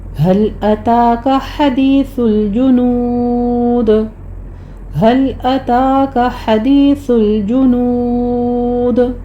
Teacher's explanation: سا میں سیٹی کی آواز نہیں آنی، سائلنٹ پڑھنا ہے اس کو · حدیث میں ہا وسط حلق سے ادا کریں گے ، آگے یائے مدہ ہے، سا میں سیٹی کی آواز نہیں · ہل میں ہا اکثر حلق سے سینے کی جانب سے ادا ہوگی